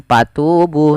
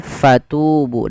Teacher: fa alirkan nafas, karena fa punya sifat huruf hamas, yaitu harus mengalirnya nafas. Jangan dibaca dengan patubu, tapi fatubu dengan f.